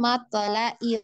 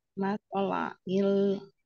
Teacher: lamnya hati-hati, lam sukun. Dialirkan, jangan dipantul.